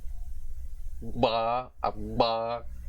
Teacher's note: this is the voiced labial velar plosive consonant